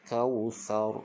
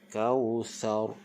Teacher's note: Kausar, tebalkan. Okey, jangan kausar, itu nipis. Kausar, kita tebalkan. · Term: tebalkan ra